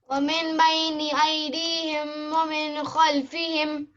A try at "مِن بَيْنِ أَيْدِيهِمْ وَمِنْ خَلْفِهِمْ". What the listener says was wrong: وا نہیں ہے شروع میں. من بين أيديهم ومن خلفهم. ومن نہیں ہے, وا نہیں لگائیے. ثم لآتینہم ثم لآتینہم من بين أيديهم. وہ وا نہیں ہے, بیچ میں